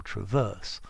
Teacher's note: Traverse beam is stressed on the second syllable, traverse. Like the verb.